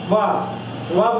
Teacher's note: ऊपर के ऊपर के दांत जो है नीचे के होठ में टच करते हैं या नीचे के दात ऊपर के होस्ट में को छू रहे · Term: दंतोष्ठम